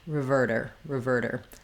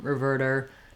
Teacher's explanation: So we still have our short little r or r for our first syllable. And then our T becomes a flap, which sounds a little more like a D, because we use the flap sound for T's and D's in the middle of words when the syllable following is not stressed.